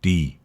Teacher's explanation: The tongue is at the front of your mouth near your teeth. The D, there's more of a vibration. D. It goes more into your throat.